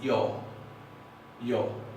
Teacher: dicen yo, una A que tiende hacia la O